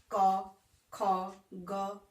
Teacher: आप जब बोल के देखोगे क, ख, ग, आपको पता चलेगा कि क से लेके अंगों तक का उच्चारण कंठ द्वारा होता है, गले द्वारा होता है। यानी कि कवर्ग का उच्चारण कंठ से होता है।